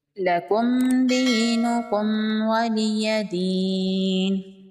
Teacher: دال حروف قلقلہ میں سے ہے، دال پر وقف ہوگا تو دال ساکن ہو جائے گا اور ساکن دال پر قلقلہ ہوگا۔ لَکُمْ دِینُکُمْ وَلِیَ دین، یہاں پر میم پر اظہار ہوگا۔